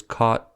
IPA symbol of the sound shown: kɑt